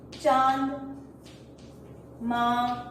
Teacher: जब भी हम यह अनुनासिक का प्रयोग करते हैं शब्दों के साथ साथ हवा मुंह से और नाक से भी निकलती है